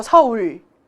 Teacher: 우에다가 리을 받침이 우모음과 같이 오는 경우에는 굉장히 더 후설적으로 이동을 하게 됩니다. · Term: 받침 리을